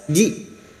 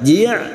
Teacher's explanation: Jitahum hamzah sukun harus dibaca siddah tegas, ji, jangan dibaca ji', ya.